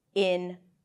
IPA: ɪn-ˈvaɪ-ərn-mənt